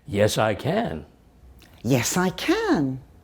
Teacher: Can is longer and higher in pitch. It's stressed. · when we give a short answer, we both say can strongly. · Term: strong form